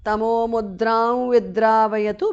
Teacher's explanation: Anuswara changes to the nasal of va.